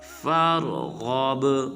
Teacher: پھر جب غین کو با ساکن کے ساتھ ملائیں گے تو با کو قلقلہ کریں گے